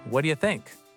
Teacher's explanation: The do completely disappears.